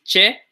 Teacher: similar to an English CH, but no aspiration